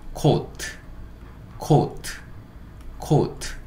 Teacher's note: OA가 무슨 소리라고 그랬죠? 그렇죠. 오우, 그러니까 오, 우가 되는 거죠. 코우. 그 다음에 마지막에 있는 T, T는 또 티읕. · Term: 이중모음